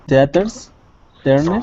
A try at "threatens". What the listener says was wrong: Threat. You got to get the TH sound. Threatens. Threaten.